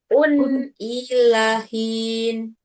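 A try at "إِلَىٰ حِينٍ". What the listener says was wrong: Ila panjang. Hin.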